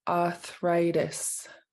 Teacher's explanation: you take out that first R and just make it a long ah